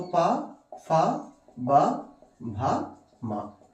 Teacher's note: ओष्ठ व्यंजन। इनका उच्चारण हम लोग ओष्ठ से करते हैं।